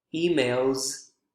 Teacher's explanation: emails sounds like a z consonant sound